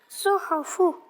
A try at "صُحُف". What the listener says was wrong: بس تھوڑا سا بجھے بجھے انداز سے پڑھا ہے آپ نے, کھل کر نہیں پڑھا نا.